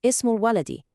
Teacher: You know how some words like ismun, for name, or ibnun, for son, start with that little I sound? Well, if you put another word right before them, that I sound just vanishes. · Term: hamzatul wasl